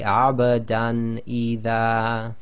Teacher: So here we have abadan idha, so we have the fathatain on the dal followed by hamza, so you just say abadan idha, so no ghunna, no assimilation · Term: idhar